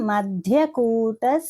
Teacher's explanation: మధ్య అన్నప్పుడు ధ అనేది మహాప్రాణక్షరము